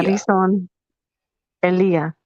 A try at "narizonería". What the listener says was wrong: Hería. R, not L.